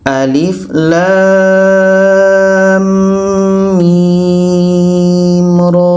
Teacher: Lam 6 harakat. Setelah itu dengung 2 harakat kerana idgham. Mim 6 harakat, ra 2 harakat. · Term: idgham mithlan